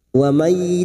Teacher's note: Wa may nun sukun bertemu ya idgham bi gunnah, siap masuk ke huruf ya dan mendengung selama 2 atau 3 harokat